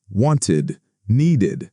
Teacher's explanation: After T or D sounds, we add id, wanted, needed. Can you hear that extra syllable?